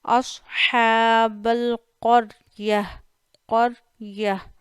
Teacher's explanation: ہا پہ کھڑا زبر ہے، 1 الف جتنا کھینچیے، صاد کو موٹا کریے